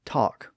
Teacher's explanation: in some dialects you may say talk with the ah sound